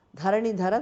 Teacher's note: the both dhas are mahapranah